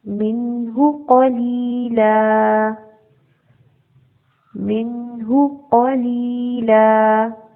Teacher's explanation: ہاں کے اوپر 1 حرکت ہے پیش، اس کو لمبا نہیں کریں گے، اور قاف ہیوی لیٹر ہے، اس کو پر پڑھیں گے۔